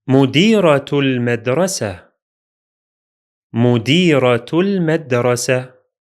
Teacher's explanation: the ta marbuta at the end of the first word is pronounced as T sound, while the ta marbuta at the end of the second word is pronounced as H sound.